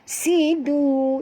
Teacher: du di sini sentil lidah, du harakat asli